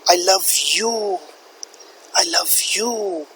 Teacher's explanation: i'm stressing on the word you and it is showing regret that i have loved a person of this sort that that